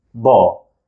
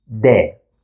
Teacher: And the second one to come is the soft pattern, which requires to smile, stretching the lips, de. So first, I will round my lips, da, and then I will stretch them, de.